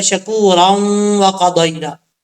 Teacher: اب اگر آپ کے پاس سانس اتنا لمبا ہے، آپ چاہتے ہیں کہ میں دوسری آیت بھی ملا کے پڑھ لوں، تو پھر را کے بعد یہاں پہ سٹاپ نہیں کریں گے، تو را کو واو سے ملائیں گے، بیچ میں الف چھوڑ دیں گے، اور یہاں پہ پھر ادغام یرملون ہوگا، ایک الف کی مقدار غنہ کیا جائے گا